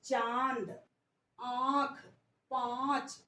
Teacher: अनुनासिक वे स्वर होते हैं जिनमें मुख और नाक से ध्वनि निकलती है।